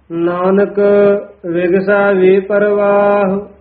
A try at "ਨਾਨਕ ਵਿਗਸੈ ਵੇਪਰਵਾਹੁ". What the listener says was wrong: ਇਹ ਵੀ ਵੇਪਰ ਰਾਰੇ ਤੋਂ ਨਹੀਂ ਤੋੜਨਾ ਹੈ, ਵਾਵੇ ਤੋਂ ਡੈਸ਼ ਦੇ ਕੇ ਲਮਕਾ ਕੇ ਉਚਾਰਨ ਕਰਨਾ, ਪਾਠ ਇਕੱਠਾ ਹੀ ਹੈ।